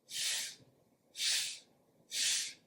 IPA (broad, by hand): f